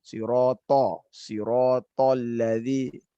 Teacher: Kalau sekedar to saja, ini masih dia sifatnya isti'ala. Isti'la ya, hanya naik saja pangkal lidah.